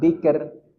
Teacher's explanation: roknya kita tipiskan dengan senyum. Bikr, dia rok yang tipis.